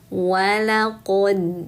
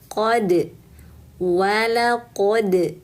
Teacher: dal itu makharijul hurufnya di ujung lidah menempel ke pangkal gigi seri atas bunda. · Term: bunyi kolkolah huruf dal